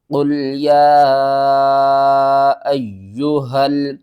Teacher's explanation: یا کے اوپر آپ دیکھیں چھوٹی مد ہے، اس مد کا نام مد منفصل ہے، اس کو 3 الف کے برابر آپ نے کھینچنا ہے